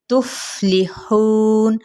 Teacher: ہا وسط حلق سے ادا کرتے · یہ جو اوپر والے جو دو دانت ہیں جس کو ثنایا علیہ کہتے ہیں، اور نیچے والے ہونٹ کا شکم یعنی تری والا حصہ وہاں پہ سے ٹچ کریں گے